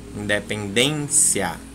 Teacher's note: Ela é uma palavra paroxítona. Por quê? Porque ó, a sílaba forte é a penúltima.